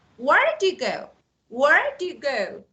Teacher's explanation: this is a falling intonation so the end of my question Falls